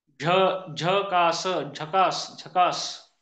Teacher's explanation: झकास या शब्दाचा उच्चार करताना जीभ फक्त टाळूला लागायली, टाळूला लागते, पण त्याला तालव्य वर्ण, हा तालव्य वर्ण आहे.